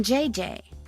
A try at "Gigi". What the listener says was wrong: Gigi. En français, you pronounce G like J and J like G. She may very well be JJ in America, but in France, she is Gigi.